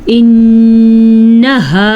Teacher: انہا نون کے اوپر غنہ